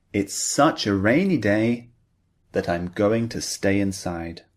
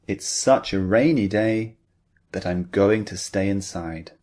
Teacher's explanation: Can you hear the intonation? It's rising up and then it's falling.